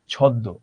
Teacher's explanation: শব্দের মধ্যে বা শেষে যদি ম ফলা যুক্ত হয়, তাহলে মটা উচ্চারিত না হয়ে সংযুক্ত ব্যঞ্জন বর্ণের দ্বিত্ব উচ্চারণ হয়ে থাকে